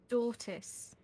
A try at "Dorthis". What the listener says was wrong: Dorthis. You must pronounce it. I know the Drow language does not always have this sound. You tend to have very, like, abrupt T's, right?